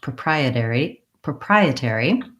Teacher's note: the stress in this word is on the second syllable